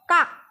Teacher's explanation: এটা অঘোষ ব্যঞ্জন ধ্বনির উদাহরণ কিন্তু আমাদের স্বরতন্ত্রীতে খুব একটা প্রেসার বা জোর পড়ছে না তাইতো কাক খুব সহজেই আমরা উচ্চারণ করে নিতে পারছি সেই জায়গায়